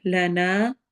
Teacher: الف مدہ کرنا ہے، یعنی کہ کھڑی زبر کی طرح لمبا